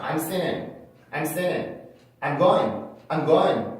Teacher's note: I'm singing 이렇게 I'm singing이라는 문장에서도 그 사람들이 편안하게 발음하기 위해서 I'm singing이라고 하는 사람들도 있지만 더 편하게 발음하기 위해서 NG 사운드를 아예 N으로 바꿔서 하는 사람들 많아요